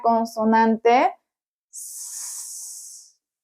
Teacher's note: Si ustedes recuerdan de qué estamos hablando cuando nos referimos a el ápice de la lengua, es decir, la punta de la lengua. Bien, aquí la punta va a acercarse a los alvéolos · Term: alveolar